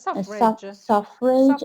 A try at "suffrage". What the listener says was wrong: most of the words that end in age, are pronounced edge, not age.